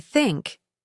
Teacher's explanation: the sound is special because we put our tongue between our teeth we push out a small bit of air if you say think you can feel your tongue touching your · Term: th sound